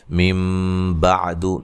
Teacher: نون ساکن کے بعد با آ رہی ہے، اقلاب ہوگا، نون کو میم سے بدل کے پڑھیں گے۔ مِن بعد، ٹھیک ہے، دال کو لمبا نہیں کریں گے۔